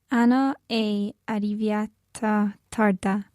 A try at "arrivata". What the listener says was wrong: Okay, are you sure about arriviata? The verb is arrivare, so it would be arrivata.